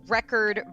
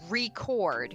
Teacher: So, like I was saying, record versus record, you're putting the stress on different syllables. Record has the stress on the first syllable, re. Record has the stress on the second syllable, which is cord.